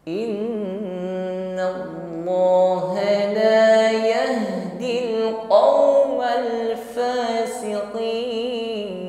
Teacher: gunnah dan gunnah musyaddadah, tingkatan gunnahnya akmal, dengung yang paling lama, paling sempurna